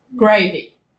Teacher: For example, to ask a cargo handler if he wanted gravy with his meat, a British English-speaking worker would say, gravy, using a rising intonation. Whereas an Indian English speaker says gravy, using a falling intonation.